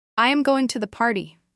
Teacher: with a falling intonation sounds much more like a statement than a question. It's all about the pitch.